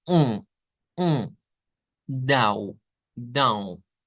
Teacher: la fuerza, por así decirlo, del sonido se da en la cavidad nasal. Eso es un sonido nasal o nasalizado o nasalizaciones que se le suelen llamar.